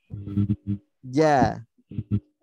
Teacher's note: jadi huruf jim setelah lidahnya ke atas, setelah menempel ke langit-langit, turunkan, stabilkan.